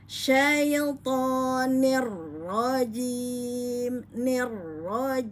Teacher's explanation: ro bertasdid maka Syamsiah ya Nir ya nirrojim ya rnya fathah maka dibaca tebal atau tafkhim pada hukum ro syaitonirrajim nirraim ya Jadi tidak menggerakkan bibir pada rnya nirjim ya